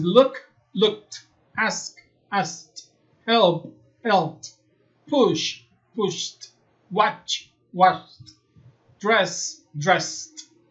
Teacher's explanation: verbos terminados en K, en P, en SH, CH, SS, su pronunciación final va a ser T. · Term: pronunciación T